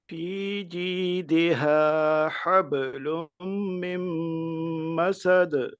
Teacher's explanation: با پہ بھی قلقلہ ہے اور آخر پہ دال پہ بھی قلقلہ ہے